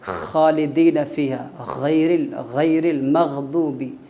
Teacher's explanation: غین اور خا، ان کا مخرج ابتدائی حلق ہے، منہ کی طرف والا حصہ ہے۔